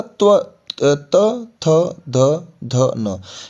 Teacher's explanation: जब आप त, थ, थ का उच्चारण करोगे तो आपकी जो जीभ है ना वो दांतों के साथ टच करेगी। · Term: त्वर्ग